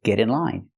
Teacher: We hear the pronunciation of T change to a fast D because it's between vowels.